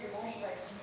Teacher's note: Et là, le E disparaît. Donc ça, c'est le E qu'on appelle caduc, justement parce qu'il est faible et il a tendance à disparaître